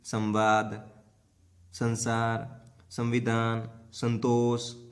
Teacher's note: जिस ध्वनि के उच्चारण में हवा नाक के द्वारा बाहर निकलती है वो तो हो जाएगा अनुस्वार